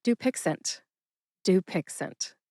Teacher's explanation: Emphasize that first syllable. Do. See if you can hear that emphasis when I say it again. · Emphasize that first syllable, du.